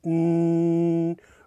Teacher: the sinus cavities as a resonating chamber the n sound mean raises the tip of your tongue to your hard palate